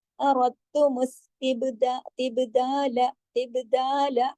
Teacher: تو اردتم تبدال, اب دال کے ساتھ الف دا لام زبر لا, زیادہ لمبا نہیں کرنا ہے, با پہ کلکلا کر کے دال کو الف کی مقدار کے مطابق کھینچ کر 2 حرکات پڑھ کے لام کو صرف 1 حرکت پڑھنا ہے